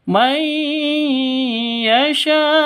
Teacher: nun mati bertemu dengan ya, masuk disertai dengan dengung. Masuk ke ya disertai dengung karena idgham bi gunnah.